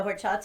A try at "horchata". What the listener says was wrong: You don't pronounce the H. The H is silent in Spanish.